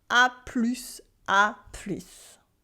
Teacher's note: we add the S sound at the end of plus that did not exist in A plus tard. A plus tard becomes A plus, A plus.